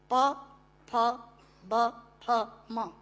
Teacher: प फ ब फ म दोनों होंठ मिलाकर बोले जा सकते हैं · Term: ओष्ठांग